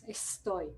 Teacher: Después, no sé si, digamos, cuánta formación en fonética tiene la gente que ahora está escuchando, pero se habrán dado cuenta que cuando decimos estoy, el segundo sonido no es una alveolar, como dijimos recién, dorso alveolar, estoy, ¿no? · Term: aspiración faríngea